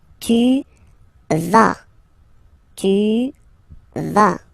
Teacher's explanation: final S not pronounced here